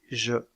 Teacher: Dans le cas de ces deux constrictives, il y a un resserrement du passage de l'air au niveau du palais avant, avec la pointe de la langue en haut et les lèvres arrondies. Aussi appelle-t-on ces deux constrictives des constrictives prépalatales.